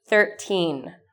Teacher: 30 versus 13, where the first part of the number is short and the second part is long